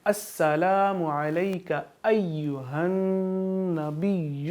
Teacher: علیہ کو لمبا نہیں کریں گے کیونکہ یہ یا لین ہے